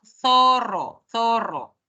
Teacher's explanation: es la pronunciación que se origina cuando la lengua está entre los dientes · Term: fricativo interdental